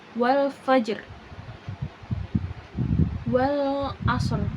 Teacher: Yang selanjutnya ada raum, yaitu meminimalisirkan atau menyedikitkan suara huruf paling akhir atau harokat huruf itu tidak ditampakkan secara penuh, kurang lebih sepertiga huruf